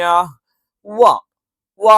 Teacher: വ എന്ന് ചുണ്ട് വൃത്താകൃതിയിൽ വെച്ചുകൊണ്ട് തന്നെ ഉച്ചരിക്കണം.